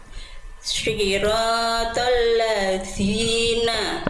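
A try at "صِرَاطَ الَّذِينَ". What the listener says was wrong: Oke, jangan keluar nafas. Nanti jadi kayak huruf sin. Enggak, keluar suara saja. Zina. Siratal ladzina.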